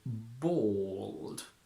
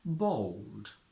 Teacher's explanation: when L appears at the end of a word or before a consonant we don't say a clear la but we curl the tip of the tongue against the alveolar Ridge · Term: dark L